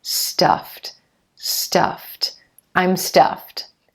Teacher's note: When you have a voiceless consonant like the F sound, meaning there's no vocal cord vibration, that ed ending is going to be pronounced like a t